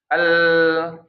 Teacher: Ternyata lam itu mengalirnya itu bukan dari makhraj, tapi mengalir dari pita suara. Bunyi nya itu dari pita suara.